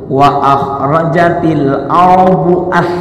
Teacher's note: za sama ujung lidah di gigi